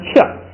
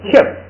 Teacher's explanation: 第二个呢，后边这个爬呢要带一个波的音，这个波的音呢也是不读出来，光做一个发波的那个口型就行了。这样一综合，这个音怎么读呢？就读克，哎，元音变成变成科呢一声变成四声变成克，然后发完这个克呢，最后口型要做一个发波的那个口型，克，等于就是把嘴闭上了，克，下边一个切， 本来是读掐，现在变成要读切呢要变成四声切